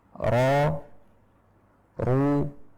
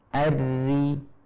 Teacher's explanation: bagian huruf ro yang tebal, maka tenggorokannya sedikit menyempit. Sedangkan ro yang tipis maka melebar. Jadi suara akan mengalir dengan mudah tanpa menyempitkan tenggorokan.